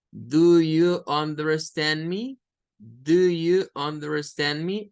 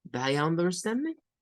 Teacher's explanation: se intercambia el sonido de au, por un schwa. Daya under, y la sílaba tónica es stand.